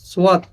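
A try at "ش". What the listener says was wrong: হইলে তো দুইটা সিন হয়ে গেল, একটা হচ্ছে সিন আর একটা হচ্ছে শিন। সিন, শিন বিপরীত। দেখা আপনি শিনকে যদি সিন পড়েন, আপনি খেয়াল করেন, তাহলে কি হবে?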